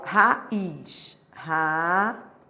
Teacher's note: Isso é um hiato. É uma vogal seguida de outra vogal em sílabas distintas.